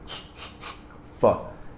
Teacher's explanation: ele é lábio dental